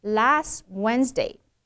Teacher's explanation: that ending T should not be exploded why because that t and the W do